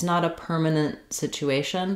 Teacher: you can hear how that t doesn't necessarily get released as I link to another consonant. So if I'm linking to a consonant sound like this of situation, permanent place, permanent house, I may not let that final t out.